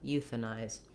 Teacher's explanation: those last two syllables are going to be quicker. And in this syllable, the th syllable, the letter A is vowel schwa. · And in this syllable, the th syllable, the letter A is vowel schwa. It's a reduced vowel. So it doesn't say a or ah, anything A related.